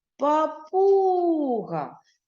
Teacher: наголос на другий склад на у